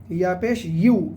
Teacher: ইয়া সবসময় জিহ্বার মাঝখান সেই বরাবর উপরে তালু থেকে হবে সর্বদা